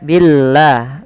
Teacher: Maka lafal Allah bila sebelumnya huruf kasrah maka dia tipis. Jangan dibaca billah.